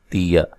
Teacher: تا کو باریک پڑھیں گے، حمزہ کو جھٹکے سے ادا کریں گے، تیا، ٹھیک ہے، کسی کو لمبا نہیں کرنا۔